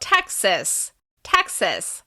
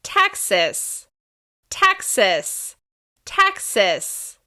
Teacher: This state is stressed on the first syllable.